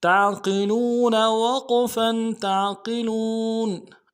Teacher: وقف کی صورت میں نون کو جزم کریں گے